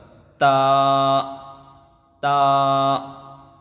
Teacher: زبان کی نوک اوپر کے دانتوں کو لگنا چاہیے، اندر دانتوں کی جڑوں پر، تا تا۔ اب لوگ کہتے ہیں تا زبان دو دانتوں کے درمیان باہر نکلتی ہے، یہ غلط ہے، اس طرح نہیں پڑھنا چاہیے۔